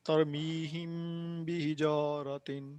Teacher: میم پہ آواز ٹھہرنی ہے، ٹھیک ہے، لمبی کرنی ہے.